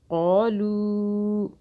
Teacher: چھوٹی مدہ 3 الف کے برابر کھینچا